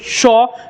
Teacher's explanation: इसका उच्चारण स्थान हमारे तालू से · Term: तालव्य श